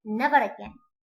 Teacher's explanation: At the end of the word I have no ra. But since it is followed by a word beginning with a vowel, I pronounce ra. So this kind of ra is known as linking ra.